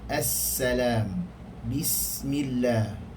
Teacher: Yang kedua diikuti oleh sin. Dia berdesir, dia berangin, yakni bersifat safir, tetapi dia tidaklah huruf yang tebal. Dia huruf yang nipis.